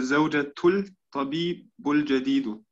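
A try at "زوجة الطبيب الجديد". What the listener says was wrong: Als erstes Zawjatul Ta. Der Ta kriegt ein Shadda.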